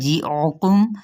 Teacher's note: عین کو وسط حلق سے ادا کرتے